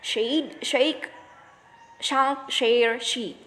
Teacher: The alveopalatal fricatives. Voiceless alveopalatal fricatives.